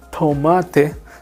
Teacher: So the T in Spanish is very, very soft T. It's t, almost silent.